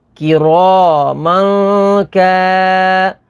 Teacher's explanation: یہاں پر ناظرین تنوین کے بعد کاف ہے، کاف حروف اخفا میں سے، تو یہاں پر اخفا ہوگا یعنی غنہ کر کے پڑھیں گے۔